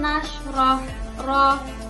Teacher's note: Lanjut, nasroh ro yang dibaca tafhim atau tebal. Jadi ro ini harus dibaca tebal karena ro berharokat fathah